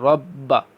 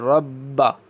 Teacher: حروف قلقلہ جب مشدد ہوں، دیکھیں با مشدد ہے نا، تو اس کو جماؤ کے ساتھ پڑھیں گے ، رب، تھوڑا سا نا سٹے کرتے ہیں اس کے اوپر،